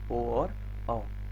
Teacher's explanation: उसके बाद कंठोष्ठ की बात आती है, तो ओ और औ, कंठ से आवाज आती है और होंठ के माध्यम से बाहर आती है, इसीलिए बोला जाता है कंठोष्ठ।